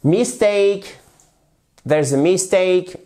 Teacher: Vous avez déjà l'accentuation sur la seconde syllabe. Ici, ça se prononce « a » et pas « e ».